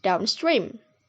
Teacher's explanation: The combination serves as adverb. The primary stress is placed on the second word and the secondary stress is on the first word